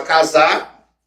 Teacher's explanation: O verbo casar que a gente por pela proximidade com Minas Gerais daqui, a gente corta esse R, fala casar.